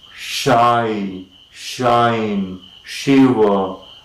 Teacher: the tongue is initially lifted towards the palate that is of course the hard palate rather the roof of the mouth the center of the roof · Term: paleto alveolar